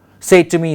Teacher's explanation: say is stressed, and to me they may not be stressed, so we have dactyl again.